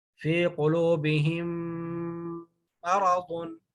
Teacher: اب یہ والی میم دوسری میم میں مرج ہو گئی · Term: ادغام مثلین